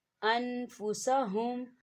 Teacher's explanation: ان ایسے نہیں پڑھنا کیونکہ یہاں نون ساکن ہے، نون ساکن سے پہلے حروف حلقی کا ورڈ حمزہ آ رہا ہے، تو نہ ہم یہاں غنہ کریں گے اور نہ اسے کھینچ کے پڑھیں گے، اسے ہم جلدی سے پڑھیں گے